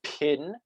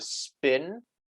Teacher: a very aspirated pa in pin as opposed to an unaspirated spa and spin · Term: voiceless aspirated consonant